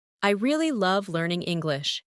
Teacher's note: Emphasize really and love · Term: stressing key words